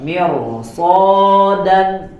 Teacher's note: Karena apa? Karena setelah ro-nya ada huruf isti'la, maka ro-nya pun terbawa dibaca menjadi bacaan yang tebal.